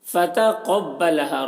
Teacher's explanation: تو قاف بھی حروف مستعلیہ میں سے ہے، اس لیے قاف کو پور پڑھیں گے